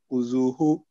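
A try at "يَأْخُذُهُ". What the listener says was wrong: Again, no ha sound. Yeah. Hamza sound. Not huzu. Huzu.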